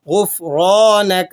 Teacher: وأطعنا تو بھی حروف مستعلیہ میں سے ہے، موٹا پڑھیں گے۔ غفرانک را کو آپ نے موٹا پڑھنا ہے، زبر ہے اس کے اوپر لگی ہوئی۔ ربنا میں بھی را موٹی ادا ہوگی۔